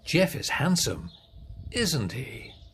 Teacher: So, if you know the answer, the voice goes down at the end.